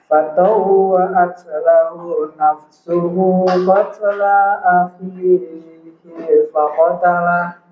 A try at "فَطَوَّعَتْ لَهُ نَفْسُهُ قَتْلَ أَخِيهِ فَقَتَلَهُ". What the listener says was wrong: Masih keliru di panjang pendeknya ya.